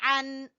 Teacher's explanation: आइन को गले के दरमियान से निकालेंगे